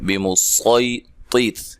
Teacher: یہ سین کے ساتھ نہیں بلکہ خالص صاد کے ساتھ پڑھا جائے گا